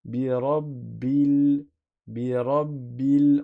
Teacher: Si j'avais lu le mot tout seul, j'aurais dit al falaq et j'aurais prononcé le alif. Mais quand je fais la liaison avec le mot d'avant, le alif disparaît. · On passe du ba directement au lam. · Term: alif de liaison